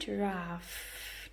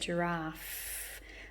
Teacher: I also saw a giraffe, ending in the f sound, giraffe. Oh, I can see how my teeth are on my lips at the end of that word